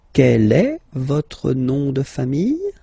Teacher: just raise a little bit your voice at the end of the question